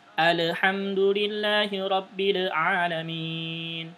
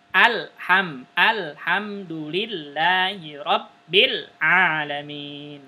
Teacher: Lamnya enggak mantul, tegas gitu.